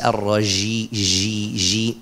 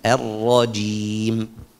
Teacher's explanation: Kalau ji itu berarti ada satu sifat jatuh. Jim itu bersifat syiddah. Syiddah itu suaranya nggak boleh mengalir.